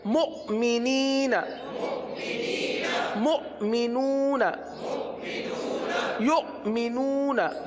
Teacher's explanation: حمزہ ساکنہ پر جھٹکا دیں گے لہذا یہاں پر جھٹکا دیا جائے گا